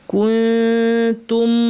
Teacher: ইনকুনতু, এখানেও তাই, তবে এখানে তায়ের মাখরাজে জিব্বা উপর পাটের দাঁতের গোড়ায় জিহ্বা পুরো লাগবে না, একটু ফাঁকা থাকবে, নাক থেকে গুণনা হবে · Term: ইখফা